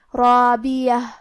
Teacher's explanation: کلمت رابیہ میں کیونکہ را پہ زبر ہے اور اس کے بعد مد الف ہے تو یہاں دونوں حرف کا حکم ہے تفخیم، ہمیں یہ دونوں حرف کو بھاری آواز میں پڑھنا ہے